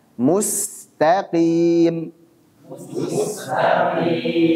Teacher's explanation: Adapun huruf Sin baca juga dengan tipis jangan sampai tebal